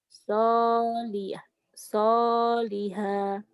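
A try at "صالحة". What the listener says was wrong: Pendek. Solihah. Gitu ya. Kayak kasih. Jadi latihannya kayak ya itu kayak orang yang judes.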